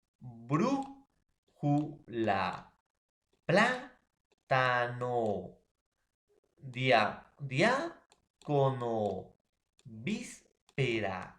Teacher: la esdrújula va a tener la mayor fuerza de voz, mayor articulación, mayor sonoridad en la antepenúltima sílaba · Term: palabras esdrújulas